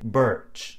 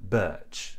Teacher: at the end of the vowel the tongue tends to curl up and back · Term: the R is actually pronounced